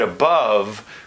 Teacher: Because these vowels are actually kind of close to one another, whereas most Americans take this turned V and they move it very much towards the schwa sound, so that the word above, for most Americans, it's going to feel like it's the same vowel in both syllables, whereas it's commonly transcribed as above, so that it's a schwa for the first syllable and the turned V for the second syllable.